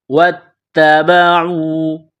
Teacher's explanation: واتبعوا، واو کو پڑھتے وقت ہونٹوں کو گول کرنا ہے، واو کو تا کے ساتھ ملانا ہے، تا کے اوپر تشدید ہے، تا میں سختی کرنی ہے